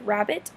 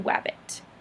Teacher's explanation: they tend to replace liquids with glides, making a word like rabbit into wabbit. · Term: Gliding